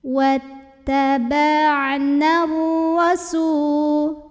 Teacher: Nah, huruf sukun ketemu huruf sukun, maka terlepaslah huruf sukun yang pertama. Jadi kalau tidak berhenti atau wasol ya, nunnya ini jangan sampai dibaca panjang, pendekin.